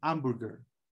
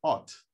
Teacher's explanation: the h in french doesn't sound